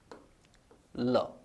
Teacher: वास्तव में इस उच्चारण स्थल का नाम होता है वरत्स। एक ध्वनि है ल, इसका शुद्ध उच्चारण स्थल होता है वरत्स। · दांत का अंतिम सिरा और मसूड़ों का आरंभिक सिरा, है ना, यहां जीवा को घुमाओ, देखें ये चिकना चिकना हिस्सा है ना, यानी जीवा दांत के अंतिम भाग और मसूड़ों के आरंभिक भाग को स्पर्श करती है। वास्तव में इस उच्चारण स्थल का नाम होता है वरत्स।